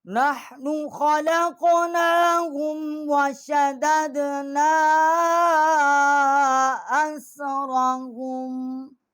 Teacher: نون الف زبر نا چھوٹی مد ہے، یہاں ہم نے 3 الف جتنا آواز بلند کی ہے